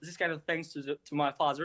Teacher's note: you can hear a couple of times his s comes out as a th a little bit.